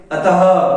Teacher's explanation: और ये विसर्ग भी जब हम बोलते हैं अतः पीछे जब बिंदु लगती है तो ह की आवाज उच्चारण करते हैं हम थोड़ा सा जोर दे करके, उच्चारण करते हैं, तो ये भी जीभ निष्क्रिय रहती है और कंठ के मूल से ध्वनि निकलती है।